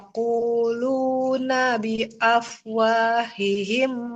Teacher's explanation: yaquuluna lamnya yang panjang bukan huruf nunnya